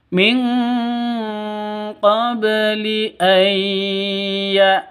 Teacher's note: Terus ba mati qalqalah sugro. Ba mati itu hurufnya qalqalah, ada di tengah qalqalah sugro, dipantulkan ke hurufnya.